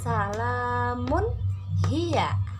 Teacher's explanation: domatain bertemu dengan huruf H maka baca jelas Salamun Hiya tidak ada dengung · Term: izhar halqi